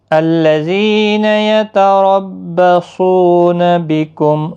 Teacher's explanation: صاد حروف مستعلیہ بھی ہے، پر پڑھنا ہے